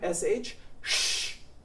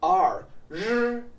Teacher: R is basically an SH, but it is voiced using your voice box.